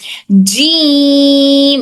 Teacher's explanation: टंग का बिल्कुल मिडिल वाला हिस्सा, फिर पैलेट का भी बिल्कुल मिडिल वाला हिस्सा, दोनों मिलकर टच होकर हर्फ जीम अदा होता है।